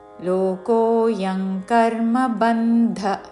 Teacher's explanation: లోకోయంగ్ అనుస్వారము, అంగ్ ఉచ్చారణ.